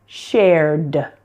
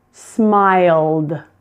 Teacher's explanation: Again, note that the E's are silent there. Just pronounce the D, not ed, but D.